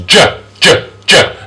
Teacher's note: put your hand in your chest and say Joe you should feel a little bit of a vibration